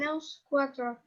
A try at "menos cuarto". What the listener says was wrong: Be careful with the cuarto versus cuatro. So watch for that. If you say menos cuatro, it's 4 minutes to 1. So it changes the meaning a little.